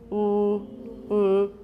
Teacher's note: That's one kind of a velarized L, but it's got lip rounding.